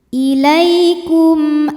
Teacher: Sebab mim sukun menghadapi huruf selain mim dan ba yaitu huruf hamzah. Maka mim sukun kita bunyikan dengan jelas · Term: izhar syafawi